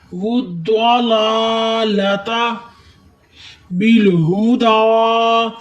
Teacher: اس ہا کی آواز سینے کے جوڑ سے نکالیں اور دال پر کھڑی ہے، دال کو آپ نے ایک الف کے برابر لمبا کرنا ہے۔